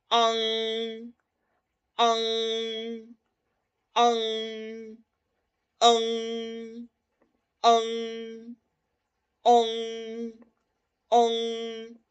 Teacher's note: el sonido es mayoritariamente nasal posterior, o sea, nace por la nariz. Sale un poco por la boca, pero es mayoritariamente por la nariz.